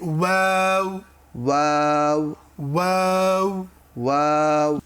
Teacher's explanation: ওয়াও দুই ঠোঁট গোল করার দ্বারা উচ্চারিত হয়। দেখি আমরা ওয়াওকে আমরা দেখতে পাচ্ছি দুই ঠোঁট গোল, ওয়াওয়ের মাথাও গোল।